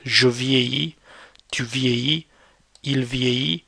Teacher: Notice how the double L, you don't actually pronounce it.